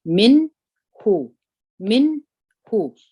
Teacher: نون موږ تاسې د ژبې پر سر باندې وایو، او ها موږ اواز د سینې څخه خیږي. دغه دوه مخرجه موږ تاسې سره ګډولی نسو. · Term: اظهار